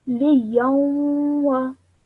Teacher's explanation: And then when you join the ya to the waw, liyawa. Between the ya and the waw, you must produce a 2-second nasal sound because of the tanween.